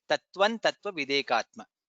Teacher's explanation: since anuswara is followed by takara, additional nakara comes there when we join and chant tattvan tattva videkatma. That's how it is chanted, tattvan tattva videkatma.